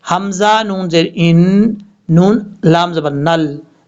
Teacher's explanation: حمزہ کو نون سے ملائیں گے، نون کے اوپر شد ہے، غنہ کریں گے ایک الف کی مقدار۔ کیسے؟ حمزہ نون زیر ان، نون لام زبر نل، نون کو جب لام سے ملائیں گے تو بیچ میں الف اور لام کو چھوڑ دیں گے، نون کو جس لام کے اوپر شد ہے اس کے ساتھ کنیکٹ کیا جائے گا۔